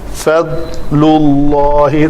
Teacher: فضل فا پتلے حروف میں سے ہے، داد موٹے سے ہے۔ فضل اللہ، داد کو کلکلا نہیں ہونے دینا